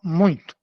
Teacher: A gente, não é colocar o N. A gente nasaliza para pronunciar